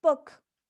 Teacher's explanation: when pronouncing oo in book the the tongue is leaning backwards